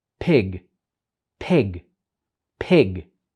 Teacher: So the initial sound of that word is p, and it is bilabial.